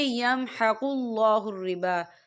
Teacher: أَصْحَابُ النَّارِ هُمْ فِيهَا خَالِدُونَ يَمْحَقُ اللَّهُ الرِّبَا، یا دیکھیں یمحق اللہ الربا، اللہ کا نام پر پڑھا جائے گا کیونکہ اللہ کے نام سے پہلے پیش ہے، اور ربا با کے پر کھڑی حرکات ہے تو ہم اسے 2 یا 3 حرکت کے برابر کھینچے پڑھیں گے.